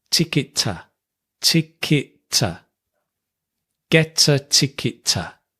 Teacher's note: I'd like to get a, we just link get a. Ticket to, we also link, but because the T and the T are the same, we just have one